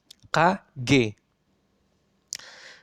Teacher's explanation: Kemudian yang selanjutnya adalah dorsovelar. Pangkal lidah atau lidah bagian belakang menyentuh velum. Velum itu adalah langit-langit lunak.